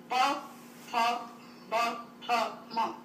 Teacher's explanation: प, भ, म दोनों होंठ मिलाकर बोले जा सकते हैं। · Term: ओष्ठांग